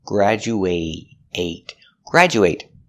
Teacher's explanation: graduate is a verb making the long a sound